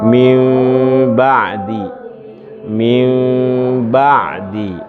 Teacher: Mim kecil di atasnya. Nah, mim ketemu ba itu sama-sama satu makhraj kan? Makhraj apa namanya? Syafatain. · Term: ikhfa syafawi